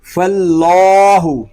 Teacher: اللہ پاک کا لام پر یعنی موٹا پڑھا جائے گا۔ فاللہ، اس کو فلا نہیں پڑھیں گے، فاللہ، اللہ پاک کا لام پر کھڑا زبر۔